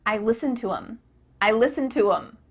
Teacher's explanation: the word them has the th cut out